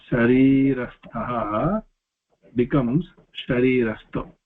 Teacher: Aha, any soft consonants, aha becomes o. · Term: விசர்க சந்தி